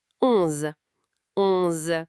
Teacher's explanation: Encore un son nasal. On, comme own en anglais, mais par le nez.